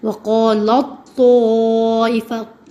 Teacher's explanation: لام ڈائریکٹ تو سے ہی ملتا ہے، وہ ادغام جو ہوتا ہے وہ ادغام تام ہوتا ہے